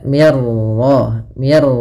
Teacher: minnya tipis rnya tebal